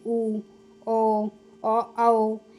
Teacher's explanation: वृत्त मुखी यानी कि जिनके उच्चारण में होठ हमारे गोलाकार होते हैं वह वृत्त मुखी होते हैं। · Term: वृत्त मुखी स्वर, व्रतमुखी स्वर